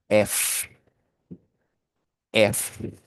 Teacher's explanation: fíjese que cuando usted dice F, las cuerdas vocales no vibran. Y como no vibran, usted dice que es un voiceless consonant.